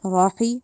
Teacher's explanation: आप लोगों ने होंठों को गोल के रॉ ऐसे पढ़ना है